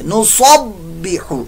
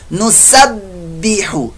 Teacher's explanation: नुसब्बिहु ये स्वाद की आवाज है, नुसब्बिहु ये सीन की आवाज मैंने निकाली है, तो आप इसको गलत ना कीजिएगा, नुसब्बिहु नहीं कर देना, सौद वाली आवाज यहां नहीं निकाली, सीन वाली बारीक आवाज निकाली।